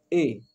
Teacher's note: ए बोलेंगे ना तो कंठ पे भी जोर पड़ेगा और जीभ हल्का सा जाके तालू को भी टच होगी देखिए ए जा रही है जीभ थोड़ा सा तालू के तरफ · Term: कंठ तालव्य